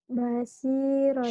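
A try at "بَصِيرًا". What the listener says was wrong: Shinnya gede. Bashiron. Bashiron.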